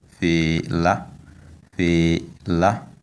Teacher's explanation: The tone is on the last vowel a